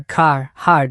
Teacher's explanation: Key features: rhoticity. Americans pronounce the R, car, hard, unlike many Brits.